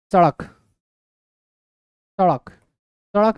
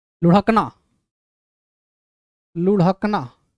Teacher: बोलते हैं क्योंकि ये जब इनका उच्चारण करते हैं तो ऐसा जीवा झटका खाती है कि लगता हुआ कि इसको मुंह से बाहर फेंक रही है इस प्रकार से इसीलिए इसे तांजा अथवा उत्क्षिप्त व्यंजन भी बोलते